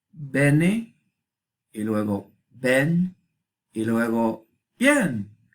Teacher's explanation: Por ahora ustedes pueden apreciar que la E se hace Y, ¿no? Diptongo.